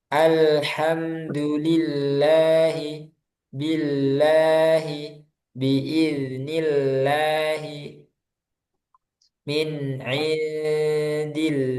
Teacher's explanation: lam ketika dibaca tipis. Kapan? Yaitu ketika sebelumnya ada huruf yang berharokat kasroh.